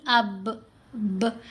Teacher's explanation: جیسے اگر ہم نے با کا کرنا ہے تو ہم کہیں گے الف زبر با ساکن اب ب، ہمارے دونوں لپس آپس میں جڑتے ہیں تو با کی آواز پیدا ہوتی ہے